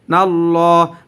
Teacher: লামের উপরে খারা জবর আসার কারণে লাম এক আলিফ টান হবে